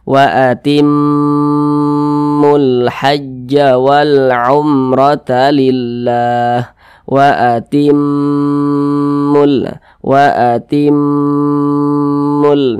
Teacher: hukumnya adalah gunah musyaddadah gunah musyaddadah cara bacanya itu diunahkan atau didengungkan jadi suaranya itu kita tahan kita panjangkan sejenak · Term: gunnah musyaddadah